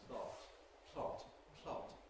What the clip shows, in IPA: pl̥ɒt